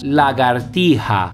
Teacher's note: la típica relajación, un relajamiento del sonido j que encontramos sobre todo en Canarias y en Andalucía